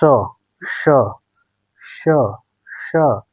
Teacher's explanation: जब आप श बोल रहे हैं तो हवा तालू पे टकरा रही है। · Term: तालव्य